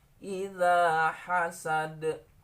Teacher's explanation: Dal ini kalau disukunkan memiliki sifat qalqalah